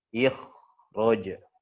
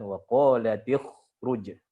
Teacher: yang semulanya kho ini dia dihukumi tafkhim nisbi naik jadi tafkhim. Naik derajat levelnya, ya.